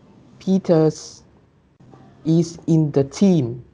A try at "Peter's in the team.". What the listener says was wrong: Ở đây họ có viết hẳn ra từ is không? Phải s đúng không nhỉ? Thì mình phải đọc là